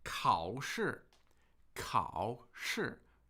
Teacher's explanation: Third tone, fourth tone.